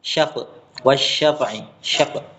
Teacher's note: Tidak qalqalah tapi rokhwah. Mengalir.